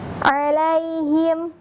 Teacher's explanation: kemudian huruf ain yang berasal dari bagian tengah tenggorokan.